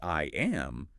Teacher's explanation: your lips naturally close from the I straight into the M